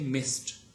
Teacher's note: Voiceless, and this ed would not be pronounced as d sound, but rather as t sound